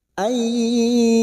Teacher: Dillahu ainun sukun bertemu ya idgham bi gunnah masuk pada huruf ya dan mendengung selama 2 atau 3 harakat